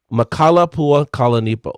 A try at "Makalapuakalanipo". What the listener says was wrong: You're forgetting the O.